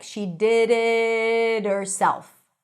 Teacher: The T sounds like a light D.